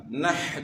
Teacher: نحن پڑھیں گے تو حرف چینج ہو جائے گا. نحن، ہا کو گلے کے درمیان سے ادا کرنا ہے